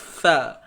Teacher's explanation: Jadi huruf sa ni pastikan kita keluarkan hujung lidah kita lah.